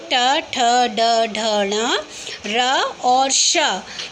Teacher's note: ये सभी वर्ण री, ट वर्ग, र और श, ये सभी वर्ण मूर्धा के अंतर्गत आते हैं। मूर्धा यानी जीभ हमारे ऊपर वाले हिस्से को टच करती है तो उनसे ये बोले जाते हैं। तो ऐसे वर्ण जिनका उच्चारण स्थान मूर्धा है मूर्धन्य वर्ण कहलाते हैं।